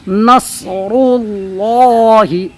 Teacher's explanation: جاء نصر اللہ، تو نون صاد زبر نص، اور را لام پیش رول، اور را پر پیش حرکت کی ہے، اس وجہ سے را کو پر کریں گے۔ پھر لام اللہ کے سے پہلے را پر پیش ہے تو اس کو بھی پر پڑھیں گے۔